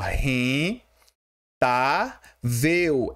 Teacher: Ela tem três sílabas, né? Só que a penúltima sílaba, que é a forte, é a tá, ó. Então, nós temos um caso de paroxítona, porque paroxítona, que é a penúltima sílaba forte.